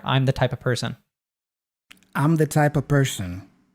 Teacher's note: the V gets dropped and we also just pronounce it as a schwa and that all links together I'm the type of person I'm